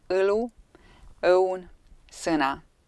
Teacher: Estonian ö is a close mid unrounded back vowel. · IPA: ɤ